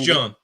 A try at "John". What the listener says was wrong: Pronounce the H. No, stop pronouncing the H. That sounds terrible.